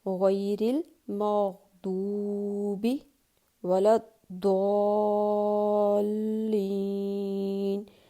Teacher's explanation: ہم اس میں دال کی بالکل بھی آواز نہیں لے کے آئیں گے، یعنی اس کو باریک نہیں پڑھیں گے ہم کبھی بھی، کیونکہ یہ ضاد ہے تو اس کو ہمیشہ ہر حالت میں پر ہی پڑھا جائے گا، غیر المغضوب ولا الضالین۔